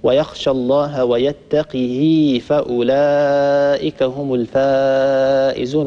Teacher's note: ورش رحمه الله يكسر القاف ويكسر الهاء مع إشباع الهاء